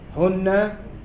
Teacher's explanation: Hunna gunna musyaddadah. Gunna dengung karena tasydid.